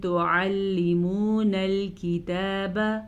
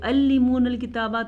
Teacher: عین کے مخرج کو واضح کر کے پڑھیں گے۔ اگر آپ اس کو پڑھیں گے تو علمون الکتابہ تو آپ عین کو حمزہ بنا دیں گے۔